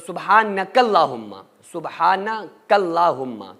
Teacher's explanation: لیکن اگر کاف کو اللہم کے لام کے ساتھ ملا رہے ہیں تو پھر سبحانک اللہم، سبحانک اللہم، کیونکہ لام کے اوپر تشدید ہے تو جو کاف ہے وہ لام کے ساتھ مل جائے گا